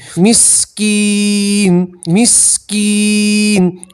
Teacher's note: काफ के साथ या मद्दा है इसलिए अलिफ के बराबर खींचेंगे